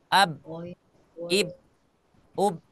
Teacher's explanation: kalau sifat qalqalnya tidak kita masukkan sukunnya huruf ba itu dia tidak mengalir